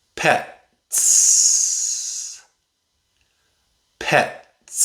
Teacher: The S at the end makes a /s/ sound. That's a voiceless sound.